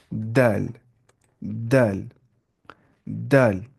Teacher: दल जुबान की नोक और सना औलिया की जड़